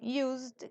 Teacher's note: esta S como en Used que es prácticamente una s que suena como una Z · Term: voiced